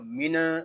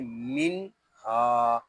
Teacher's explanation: آگے الف جو ہے یہ زائد ہے، اس الف کو نہیں پڑھیں گے۔ منہا، یہاں نون ساکن میں اظہار ہوگا، نون ساکن کو سکون کے ساتھ ادا کریں گے۔ اس کو من اس طرح نہیں پڑھیں گے، اس کو پڑھیں گے من ہا۔